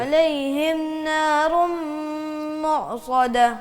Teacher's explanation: ہا جو علیہم کا ہا بھی واضح کرو اور اس کو زیر کو واضح کرو، مجہول نہیں پڑھنا